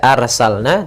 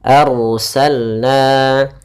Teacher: ada ro yang didahulukan dengan huruf fathah, maka ro-nya tebal, jangan dibaca arsalna tapi dia arsalna.